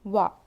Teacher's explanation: دونوں ہونٹوں کو گول کرنے اور نہ ملانے سے واو ادا ہوتا ہے. واو کے اوپر زبر ہے، نہیں کھینچیں گے.